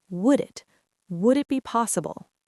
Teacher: Native speakers will compress this entire block of words into one fluid sound. The D in would links to the I in it.